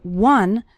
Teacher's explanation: The word one starts with the W sound